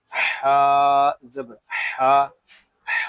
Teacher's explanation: ہا حلق کے درمیان والے حصے سے ادا ہوگا